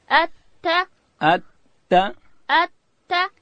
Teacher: تا ادا کیږي د ژبې سر به د لوړې زامې د مخ د دوو غاښو و بیخو ته ورړو.